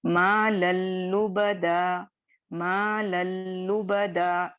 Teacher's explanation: تنوین کی بالکل آواز ختم ہو جائے گی اور مرجنگ ڈائریکٹ لام میں ہو جائے گی